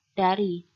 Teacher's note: Deh merupakan bunyi bersuara. Contohnya pada kata dari.